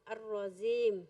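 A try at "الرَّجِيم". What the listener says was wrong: No, ar-rajim. Kurang lembut, ar-rajim. Seperti tadi nyebut bajai, jaji, ju, aj, bajai, jim.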